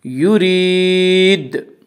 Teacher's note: یرید کی را کو باریک پڑھا جائے گا۔ اس کا قاعدہ ہے کہ را کے اوپر زبر پیش آئے تو را کو پر پڑھا جائے گا، را کے نیچے زیر آئے تو را کو باریک پڑھا جائے گا، یا را کے نیچے زیر اسی را کو باریک پڑھیں گے۔